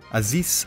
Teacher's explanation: Aziz should end with an elongated S. Ari and Ta'agra should have a short trilled Ro.